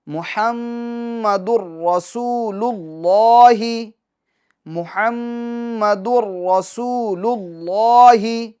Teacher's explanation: یہ میم مشدد ہیں، لہٰذا اس میں ہمیں ایک الف کی مقدار گنہ کرنا ہے · اور دال کے اوپر تنوین ہے، تنوین کے بعد حروف یرملون میں سے کیا آ رہا ہے؟ را آ رہا ہے، تو یہاں ادغام تو ہوگا مگر گنہ نہیں ہوگا